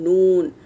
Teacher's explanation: ये ज़बान का किनारा मसोड़ों के ऊपर के मसोड़ों के जड़ में लगेगा तो नून का मखरज है